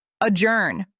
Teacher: Adjourn. Stress the second syllable. Adjourn. The J makes a soft sound, like adjourn.